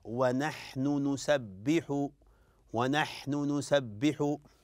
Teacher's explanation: صعوبه في نطقها فنطق ونحن نسبح يعني النون مع النون يعني لابد من اظهار النون وضمها ثم بدء النون الاخرى